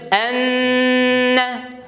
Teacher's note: Сузу юк монда. Монда бар тәждид тоту.